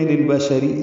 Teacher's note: را کی نیچے زیر ہے، وہ معروف طریقے سے باریک پڑھیں گے